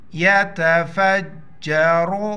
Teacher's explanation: ہو جائے گا شد ہے سختی سے پڑھیں گے یتفجر را را پر پیش ہے موٹا کر پڑھیں گے